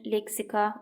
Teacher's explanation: İka vurğu qəbul etmir, leksika ikadan əvvəldədir. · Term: heca vurğusu